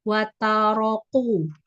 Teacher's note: Jadi kafnya terlalu jauh ke belakang; Pengucapannya seperti huruf qaf.